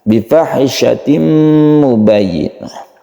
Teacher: tanwin bertemu dengan mim maka tanwin ini membacanya harus masuk ke mim dan kita panjangkan hati-hati di tasydid ya Ini juga kita tekan mubayyinah belakangnya itu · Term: Idgham bighunna